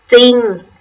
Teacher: เวลาอ่านจะออกเสียงเฉพาะพยัญชนะตัวหน้าและไม่ออกเสียงรเรือ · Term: คําควบกล้ําไม่แท้